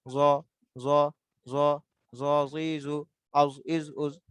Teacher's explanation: জিহ্বার আগাটাই কিন্তু উপরে দুইটা দাঁতের আগার সাথে লেগে যাবে হালকা ভাবে।